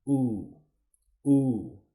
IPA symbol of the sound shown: u: